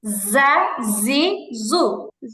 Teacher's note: খেয়াল করে না পড়লে ভুল হবে। জিহিবার আগা, নিচের 2 দাঁতের আগের সাথে লাগবে।